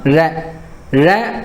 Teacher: ழ அப்படின்னு சொல்லும்பொழுது நாக்கினுடைய நுனி மேல் அன்னத்தை வருடிச் செல்லும்